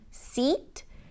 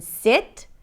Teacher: the tense /i/ as in 'seat', the lax /ɪ/ as in 'sit'